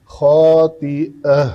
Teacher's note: ناصیۃ کاذبۃ خاطئہ، حمزہ کو عین نہیں بنانا، خاطئہ نہیں، عین وسط حلق سے آواز نہیں آنی چاہیے،